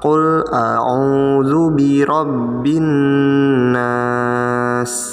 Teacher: Nun tasydid nah dibacanya dengung nyata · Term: ghunnah